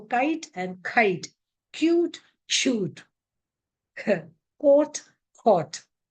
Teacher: But in English, it is aspirated variety of k.